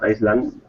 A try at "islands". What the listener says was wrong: by the way just be careful with the pronunciation Islands Islands Islands there's no s